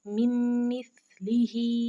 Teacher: नून को, इस मीम को और इस मीम को हमने एक दूसरे में मुदगम करके पढ़ा है। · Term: इदगाम